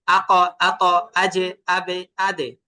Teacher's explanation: বাজিমদাল নিচের দিকে ধাক্কা যাবে আর কফ উপরের দিকে ধাক্কা দিয়ে উচ্চারণ করতে হবে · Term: কলকলা